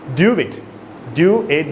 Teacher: instead of saying those two words separately that is a W sound in between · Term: intrusion